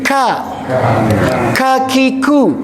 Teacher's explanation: Dikeluarkannya pun pasti ada udara yang mengiringi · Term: huruf kaf